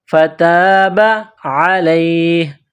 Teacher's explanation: الف سے پہلے زبر ہے، حروف مدہ ہے، ایک الف کے برابر کھینچ کر پڑھیں گے۔ فتاب علیہ، عین گلے کے درمیان سے زور لگا کر عین کو نکالیں گے، پڑھیں گے۔